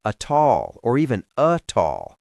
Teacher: And the A links to all.